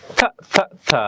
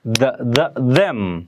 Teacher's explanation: the voiceless consonant sound th and its voiced partner the that you hear at the beginning of the word that